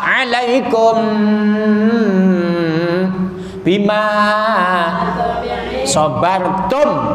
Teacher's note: Salamun alaikum. Ikhfa saf, ada mim mati ketemu ba, ikhfa safawi agak lama